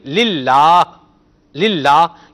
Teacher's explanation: اچھا اس سے پہلے اگر زیر ہو تو پھر اس کو باریک پڑھیں گے، اب اس میں ترقیق ہو جائے گی، اس کو باریک پڑھیں گے. للہ، للہ، یہ لام باریک ہو گیا.